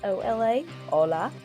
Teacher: the letter H is silent you hear that